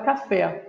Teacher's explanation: Palavra café termina em E, que é vogal temática em português, mas não nessa palavra, porque, mais uma vez, nós temos uma palavra oxítona, uma palavra cuja sílaba tônica é a última